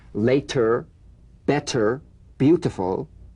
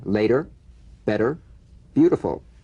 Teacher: tapped kissed missed fished cashed and a voiced group handed started the medial T becomes a soft D all right not a complete D but it goes toward a d